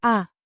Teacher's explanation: In this context, it's part of the perfect tense conjugation and is unstressed, pronounced with a weak vowel sound barely audible as a schwa sound